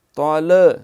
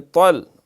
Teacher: اہدینا الصراط، سین کے اوپر سیٹی ہے موٹی، را پر ہے تفخیم کے ساتھ، صراط طل، قلقلہ نہ ہو لیکن طل، تا موٹا ہے، طل مستقیم، سین پہ بھی سیٹی، مستقیم، قاف جو ہے اس میں بھی اہتمام سے یہ موٹا ہے۔